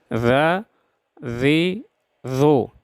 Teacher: نرم آواز سے ادا ہو رخوت کی وجہ سے۔